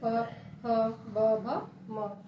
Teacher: हमारा ये जो ओठ है ये टच होता है एक दूसरे से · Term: पावर्ग